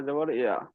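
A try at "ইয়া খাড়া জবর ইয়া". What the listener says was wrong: হ্যাঁ, ইয়া খারা জাবার ইয়া বলে একাধিক পরিমাণ টান দিতে হবে, তা নাহলে তো জবরের মতো হয়ে যাবে, জবর আর খারা জাবারের মধ্যে পার্থক্য করতে হবে। হ্যাঁ, ইয়া খারা জাবার ইয়া।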